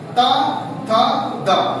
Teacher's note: जैसे हमने आपसे बोला कि ता था दा बोलिए, तो देखिए आपका जीभ जाके दांत में टच कर रहा है। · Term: दंत्य